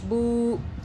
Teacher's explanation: बा पेश बू होता है तो वाव आ गया तो हम बुक की जगह बू करेंगे, आवाज़ को खींचेंगे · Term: मद्दा